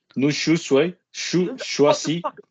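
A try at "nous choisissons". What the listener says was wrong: You stop saying chouchwa. Just say for me choisi. Just say choisi. Now put the se on the end of it. Choisis.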